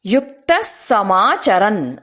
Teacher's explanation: ವಿಸರ್ಗ ಆದ ನಂತರ ಸ ಅಕ್ಷರ ಇರೋದರಿಂದ ಯುಕ್ತಹ ಸಮಾಚರನ್ ಅಂತ ಹೇಳದೆ ಸ ಅಕ್ಷರವನ್ನ ಸ್ಟ್ರೆಸ್ ಮಾಡಿ